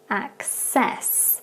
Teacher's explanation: with that C sound, it becomes more like a K and an S at the beginning instead.